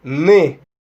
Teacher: es similar a la M en cuanto el aire sale por la nariz